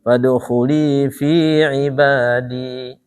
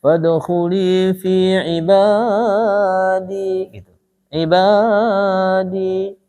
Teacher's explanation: Jadi antara ba dengan di harus sama, 2 harakat. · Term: mad tabi'i